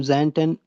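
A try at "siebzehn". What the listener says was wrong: सेंटन, सेंटन। जेन नहीं ना, सीन के साउंड करें, सेन।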